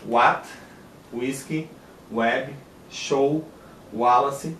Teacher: vai ser uma vogal ou semivogal pronunciada como U em palavras de origem inglesa